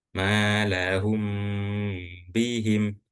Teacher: mim yang sukun ini bertemu dengan huruf ba. Maka ini dibacanya dengung. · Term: ikhfa syafawi